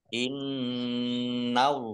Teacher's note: nun tasdid dibaca hunna atau mendengung, ditampakkan ditahan 2 harokat. Allahnya dibaca tebal karena harokat di depannya fathah.